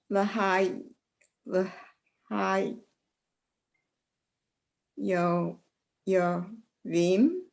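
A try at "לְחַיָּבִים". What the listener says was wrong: It's an ah under the yud. Try it one more time.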